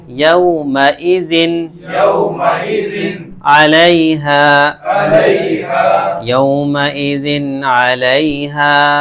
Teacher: بالکل تنوین کو ظاہر کر کے صاف ستھرا کر کے پڑھیں گے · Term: اظہار